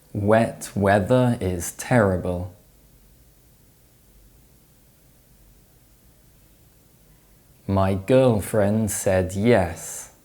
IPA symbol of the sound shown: e